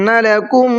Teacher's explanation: اہبطوا کے طا کو منہ بھر کے پڑھنا ہے، مصرا کے صاد کو منہ بھر کے پڑھنا ہے، فإن کے نون میں غنہ کرنا ہے، لکم کے اندر میم میں بھی غنہ کرنا ہے